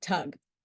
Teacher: Consonant T is a voiceless alveolar plosive. The sound is made by placing the tip of the tongue against the alveolar ridge, creating a complete closure, blocking the airflow through the mouth.